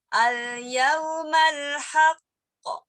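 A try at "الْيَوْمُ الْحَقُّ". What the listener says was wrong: Tapi bukan al-yauma masalahnya.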